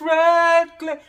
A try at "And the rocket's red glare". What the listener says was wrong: Because you got to take it up. And you're not, you got to listen to the change of it. In the rockets red glare. Remember about throwing your words? So you have to you have to throw it out.